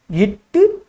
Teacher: நாவின் நுனி அன்னத்தின் நுனியை பொருந்துவதால் பிறக்கும் எழுத்து